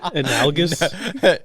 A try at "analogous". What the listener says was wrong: Analogous. You said You said. I thought he said it right.